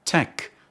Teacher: Finally, tech starts with an alveolar consonant articulated with the tongue touching the alveolar ridge